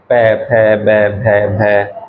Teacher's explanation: हमारे जो ओठ होते हैं वो आपस में टकराएंगे · अब अगला देखो, अगला क्या आएगा, ओष्ठ, मतलब होठ, तो उ या दीर्घ उ, इनको बोल के देखो, और उसके बाद पै वर्ग हमारा पै वर्ग बोल के देखो, तो हमारे जो होठ होते हैं वो आपस में टकराएंगे